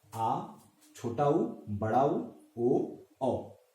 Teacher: इन 5 स्वरों का उच्चारण करेंगे तो आप इस चीज का आभास कर सकते हैं कि हमारे जिह्वा का जो पिछला हिस्सा है वो ऊपर नीचे होता है, जिसकी वजह से हम इसका उच्चारण बहुत ही आसानी से कर सकते हैं। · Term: पश्च स्वर